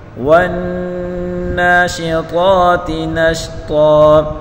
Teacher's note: نون مشدد غنہ کے ساتھ پڑھیں گے ، وا کو نون کے ساتھ ملا کر پڑھیں گے، نون